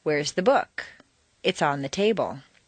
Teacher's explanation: The first is stressed on the most common everyday word, book. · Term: Normal intonation